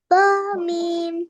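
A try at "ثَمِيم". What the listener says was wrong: Ba, no, my friend. Sa meme.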